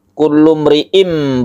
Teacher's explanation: iqlab artinya membalik dari suara tanwin menjadi M atau mim mati · sehingga membacanya itu kullum riim bukan n tapi m Ulum dan dipanjangkan ya didengungkan panjangnya bisa sampai 3 Alif